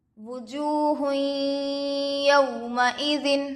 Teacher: یا پر زبر کی حرکت ہے، جلد پڑھے۔ واو ساکن سے پہلے پیش ہے، واو مدہ ہوگا، تھوڑا کھینچیں اور معروف پڑھیں